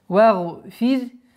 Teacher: Вагфир. Здесь ра, буква ра, мягкое произношение, потому что она подчиняется впереди стоящей огласовке